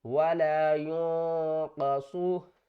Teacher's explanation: میں سے قواف ہے، تو ہم کیا کریں گے یہاں پر اخفا کریں گے، یعنی کہ نون کی آواز کو چھپا کر پڑھیں گے